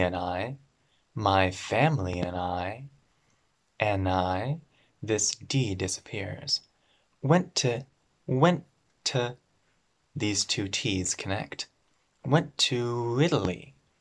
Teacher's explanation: Ooh, Italy, there's a very small w.